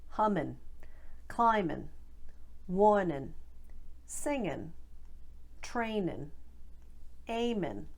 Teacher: in very often especially in south boston all ing endings get shortened to i n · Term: ing endings to in